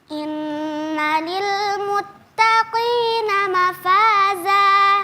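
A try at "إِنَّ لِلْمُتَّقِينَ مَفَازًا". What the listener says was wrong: Ya, qafnya tebalkan. Jangan karena tipiskan qafnya jadi kurang tebal. Qafnya tetap tebal, taknya tipiskan.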